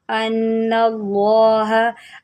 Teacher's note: नून मुशद्दिद है, गुन्ना करें। अन्नल्लाह, अल्लाह के लाम को मोटा पढ़ें।